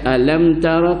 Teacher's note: maka bacaannya mesti kita zahirkan mim mati dan jangan dengung, jangan lambat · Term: izharu syafawi